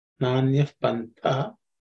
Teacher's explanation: This Tha is the second letter in the Tavarga, so it has be aspirated.